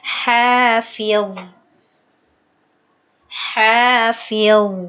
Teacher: berhenti pada kata hafil, itu kan jadi sukun. Itu tidak boleh mantul.